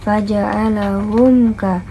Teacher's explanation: mim mati bertemu dengan ka berarti izhar syafawi yang dibaca dengan jelas